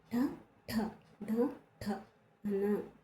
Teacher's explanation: ఓకేనా అండి తాలవ్యాలు అంటే దౌడ నుంచి పుట్టినవి మరి అవి ఏ అక్షరాలు చని నెక్స్ట్ ట ఠ డ ఠ అన వీటిని ఏమంటాము మూర్తన్యాలు అంటాము. మూర్తన్యము అంటే నోటి పై భాగం నుంచి పుట్టినవి కాబట్టి వీటిని మూర్తన్యాలు అంటాము.